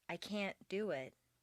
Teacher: Make the negative can't sound very short and stress both can't and the verb. This will contrast with the positive emphasized can, which is doubled, and the verb is not stressed.